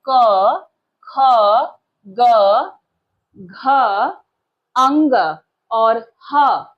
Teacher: क वर्ग, इसके अंतर्गत क, ख, ग, घ, अंग और ह, इन सभी का उच्चारण स्थान है कंठ। क वर्ग के वर्ण और साथ ही साथ ह, इनका उच्चारण स्थान है कंठ।